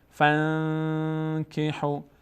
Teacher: کاف همینطور اگر بعد از نون ساکن کاف هم بیاد اخفا میشه. فانکحوا، صدا از بینی ادا میشه، روش مقداری توقف میکنیم.